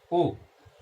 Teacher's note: कंठोष्ठ। तो ओ औ कंठोष्ठ से बोला जाता है